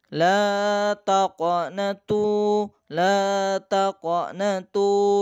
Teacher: La taqnatu, la taqnatu, di situ ada qalqalah. Nah, la qaf sukun ya, dibaca qalqalah sughra jika di tengah-tengah kalimah, atau qalqalah kubra jika di akhir kalimah atau di akhir ayat.